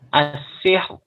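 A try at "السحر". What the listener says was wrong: As-sihr. Ra-nya tipis. As-sihr. Itu tebal ra-nya. Sihr. Sihr. As-sihr.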